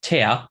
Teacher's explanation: the vowel often gets lengthened or in Germany's case it becomes a diphthong with a schwa